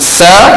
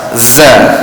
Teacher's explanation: apa yang membezakannya itu sifat Hamas dengan jaharnya